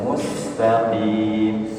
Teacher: Sin sukun Sin maka mengalir suaranya ditambah lagi dia punya sifat saofir ya berdesis